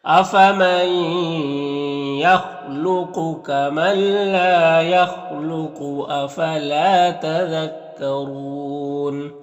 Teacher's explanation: خا حروف مستعلیہ میں سے پر پڑھیں گے، اور قاف حروف مستعلیہ میں سے پر پڑھیں گے، اور اگر یہاں پر وقف کریں گے تو قاف میں قلقلہ بھی ہوگا، کیونکہ قاف حروف قلقلہ میں سے بھی ہے اور وقف کی صورت میں جزم میں بھی آ جائے گا تو قلقلہ ہوگا۔